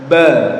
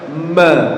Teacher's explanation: Ba Itu qalqala kalau mim ghunah ya jadi mim itu ada sifat ghunahnya